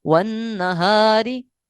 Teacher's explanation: الف باریک پڑھا گیا ہے کیونکہ الف سے پہلے حروف مستعلیہ نہیں ہے، اور الف سے پہلے حروف مستعلیہ نہیں ہے، اس لیے الف باریک پڑھا گیا ہے، یعنی ہاں موٹا ہے ویسے ہی لیکن حروف مستعلیہ نہیں ہے، حروف مستعلیہ ہونا لازمی ہے۔